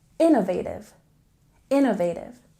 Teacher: in Innovative we stress the first syllable